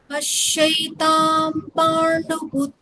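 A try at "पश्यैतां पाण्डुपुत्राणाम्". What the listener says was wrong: হ্যাঁ, সুন্দর।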